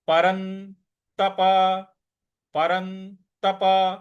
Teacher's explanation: परन के बाद जो आधा न है इस पर थोड़ा सा बल लगाना है